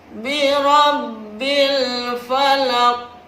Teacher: Qalqalah di sini yang terletak di akhir kalimat dinamakan qalqalah kubra. Qalqalah artinya memantul, kubra artinya besar.